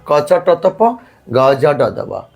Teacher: প্রতি বর্গের প্রথম এবং তৃতীয় ধ্বনিটা অল্পপ্রাণ